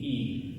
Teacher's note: Iota is called a uniform high front vowel.